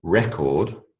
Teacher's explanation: when the emphasis is on the first syllable record it's a noun